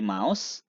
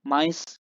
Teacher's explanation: Yang berubah kan hanya satu, suara vowel au menjadi I. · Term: vocalic change